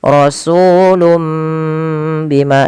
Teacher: ini bacanya bukan rasulu bima, tapi rasulum, mimnya dibaca. Asalnya rasulun bima, karena bertemu dengan ba diganti seperti ini penulisannya. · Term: iqlab